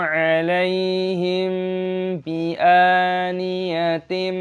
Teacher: A mim sukun diikuti oleh ba, aturannya adalah ikhfa syafawi, dibaca dengan menyembunyikan